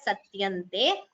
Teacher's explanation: you combine the anuswara and chant it as satyante